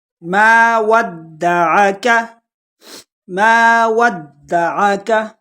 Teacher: دال کو جھٹکے کے ساتھ پڑھیں گے۔ ابھی آپ کو میں نے اوپر بتا دیا کہ یہ جو تشدید ہے 3 نقطوں والی، اس کو جھٹکے کے ساتھ پڑھیں گے۔ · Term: حروف قلقلہ